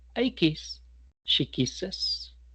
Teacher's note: En el segundo aspecto a tener en cuenta es que si en nuestro verbo termina en S, X, CH, CH u O, lo que vamos a aumentar es un sonido vocálico, que es el sonido de la E, y la S. ES, más exactamente.